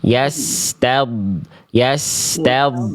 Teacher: donnya ini harus jelas mengalir. Jangan sampai suara huruf dod itu putus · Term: dod sukun